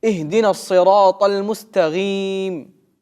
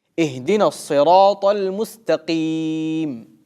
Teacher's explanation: некоторые люди вместо буквы «каф» в слове «мустаким» произносят твердую «гайн»